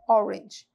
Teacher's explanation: Esse aqui foi orange, né? O som de O, né? Bem redondinho